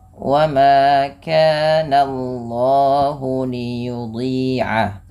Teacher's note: Wa ma kana Allahu, Allahnya perhatikan jangan menebalkan langsung jangan menebalkan bunyi suara jangan menebalkan bunyi suara na-nya, tapi ditebalkan bunyi Allahnya, sehingga na-nya tipis, Allahnya tebal.